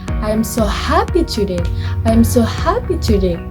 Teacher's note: With rising intonation and more careful, conveys a feeling of real joy.